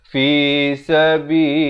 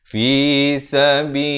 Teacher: Dan lafz jalalah dibaca nipis.